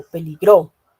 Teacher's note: Y ahí el acento está en la sílaba gro